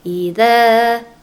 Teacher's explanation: dza panjang, dua harokat ya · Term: mad tabi'i